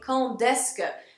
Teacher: it's not a D sound, it's a T sound